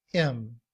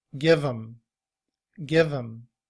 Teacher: when we reduce the word him, we drop the H sound and we just say im. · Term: reduced form